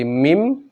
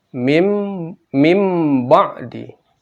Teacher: Nun mati atau tanwin atas, bawah, depan bertemu dengan huruf ba maka berubah menjadi mim mati.